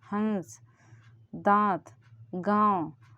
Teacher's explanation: दांत तो नाक से हवा निकल रही, नाक का थोड़ी सी हेल्प लेते हैं। हंस, दांत, गाँव, ये नाक से हवा निकल रही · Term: अनुनासिक